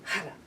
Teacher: that R is bouncing off the roof of the mouth, and we're pulling our belly in, Hara, activating an energy center, a chakra in the body that really activates our motivation.